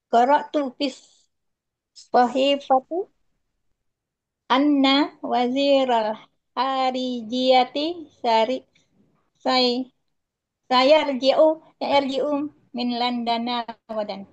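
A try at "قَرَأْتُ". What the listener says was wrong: Bagus. Qara'tu bukan qala tuh.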